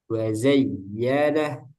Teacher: harusnya wazayyanah agak naik suaranya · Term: dihentak nabar